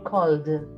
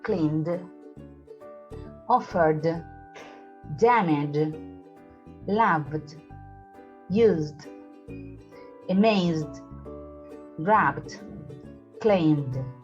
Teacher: ends in a voiced consonant or sound, then the ed is pronounced like a d without creating another syllable.